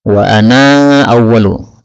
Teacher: Kemudian wa ana seperti biasa ketika ana berjumpa dengan hamzah. Nah, maka boleh panjang.